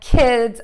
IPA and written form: kɪdz (KIDS)